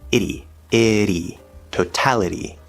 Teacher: Also notice at the end of the word totality, we have a weak T sound between two vowels